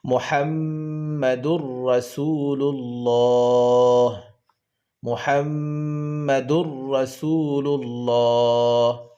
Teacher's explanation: এটাকে তানবিনের আওয়াজকে পরের হরফ রার সহিত মিলাইয়া পড়তে হবে, মিলাইয়া পড়তে হবে। তখন আর তানবিনের উচ্চারণ থাকবে না, তানবিনের উচ্চারণটা রার সাথে মিলিয়ে যাবে। তাই বলতে হবে মুহাম্মাদুর, রা জবর রা, সিন ওয়াও পেশ সু, রাসু, লাম লাম পেশ লুল, রাসূলুল, লাম খড়া জবর লা, হাজের হি, রাসূলুল্লাহি, মুহাম্মাদুর রাসূলুল্লাহি। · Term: ইদগামে বেলাগুন্নার কায়দা